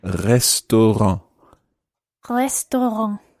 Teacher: it's this sort of guttural rolled R. What you can do is if you raise your tongue in your mouth as if you're going to say the letter G, as in girl, G.